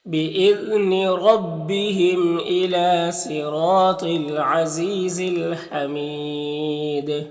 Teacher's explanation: وقف کریں گے تو دال میں قلقلہ ہوگا اور مد عارض وقفی ہوگا